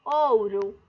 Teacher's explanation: o ou é minha penúltima sílaba e a mais forte. É minha sílaba tônica e a penúltima.